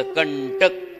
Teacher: ट वर्ग असेल तर बाणाचा न जसं कंटक आता क च्या अनुस्वाराच्या पुढे ट आला म्हणून टन बाणाचा न